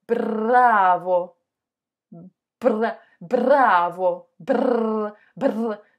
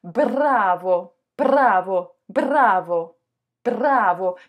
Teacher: Donc ta langue, elle doit vraiment vibrer à l'expiration. C'est vraiment quand tu expires que le bout de la langue qui est derrière l'incisive et qui touche très légèrement l'incisive, doit vibrer